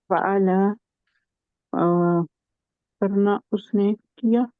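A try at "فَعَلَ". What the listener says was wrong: ऐसा है कि आप ना आखिरी हरूफ को लंबा मत खींचे, ठीक है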